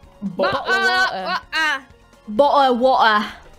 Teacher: So when Brits say things like bottle or British, that's a glottal stop.